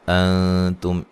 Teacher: نون ساکن کا اخفا ہے باریک، تم میم ساکن کا اظہار ہے، غنہ نہیں کریں گے۔ الا، لا الف مدہ ہے، فی یا مدہ ہے، ولا واد کو موٹا ادا کریں گے، اس کے مخرج سے نکالیں گے، ٹھیک ہے جی۔